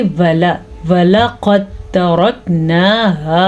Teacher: दाल नहीं पढ़ी जाएगी बल्कि ता पढ़ा जाएगा, तो इसलिए कलकला नहीं होगा